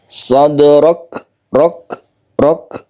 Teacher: Yang kaf ini mempunyai sifat hamas atau mahmus, di mana dia itu setelah kita tabrakkan ke kaf ini masih ada lelehan sedikit.